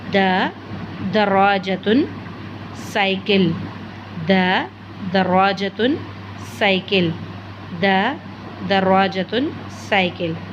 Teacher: ज़ुबान की नोक को ऊपर के 2 दांतों की जड़ से लगाएंगे तो द अदा होगा।